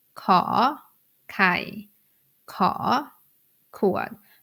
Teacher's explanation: when I pronounce the initial sound of the consonants I made it in a rising tone for example kai co cad that is the natural sound natural tone of the high class consonants.